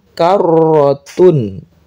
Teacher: Idzan karrotun ada tasydid maka ditekan karrotun. Tun ini dibaca jelas.